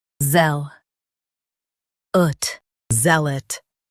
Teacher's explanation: Emphasize zeal and soften ot.